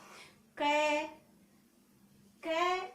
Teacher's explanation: जब अपन इसको लंबा लेते हैं या थोड़ा ज्यादा बोल लेते हैं तो इसमें स्वतः ही कै के साथ ए की ध्वनि उच्चारित होने लग जाती है